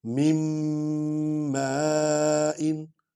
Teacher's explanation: اب دیکھیں یہ یہاں کلیہ ہے کہ اگر شد والے حرف سے پیچھے جزم والا حرف آ جائے تو اس کو نہیں پڑھا جاتا، اب ہم نون نہیں پڑھیں گے، میم کو میم میں ملائیں گے، مِن مَّاءٍ، نون غنہ بھی ہو جائے گا، اور شد والے حرف کو پڑھیں گے، شد والا حرف 2 بار پڑھا جاتا ہے، ٹھیک ہے۔